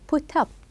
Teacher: The up is more stressed than the verb.